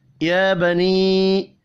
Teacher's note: या के ऊपर खड़ी ज़बर है, एक अलिफ के बराबर खींच कर पढ़ेंगे